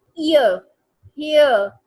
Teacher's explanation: ईयर जो है that is a gliding vowel, जिसको हम डिफ्थोंग कहते हैं, क्योंकि ये दो साउंड से मिलके बनता है ई और ए